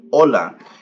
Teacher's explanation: the H is silent so you just pronunciate the rest of the word